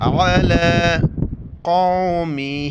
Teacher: آئین کو گلے سے کریں گے